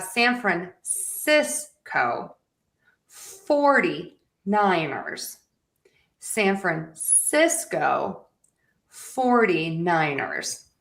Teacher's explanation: when I'm putting both of the words together into a phrase, my syllables are going to get shorter overall. So, to some people, it does sound like I'm speaking a little bit quicker.